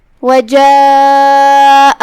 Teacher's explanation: مد واجب متصل کا معنی ہے کہ حرف المد اور اس کی وجہ جو کہ حمزہ ہے وہ دونوں ایک ہی کلمہ میں ہو. مد واجب متصل میں ہم اپنی آواز 4 مد کے برابر لمبی کریں گے